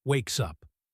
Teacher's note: Wakes ends with the S sound. Up begins with the U vowel. In natural speech, we say wakes up. The S jumps over. It sounds like ways up.